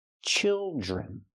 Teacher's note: And the D R makes the j sound like jump and juice. Plus the R, j-j.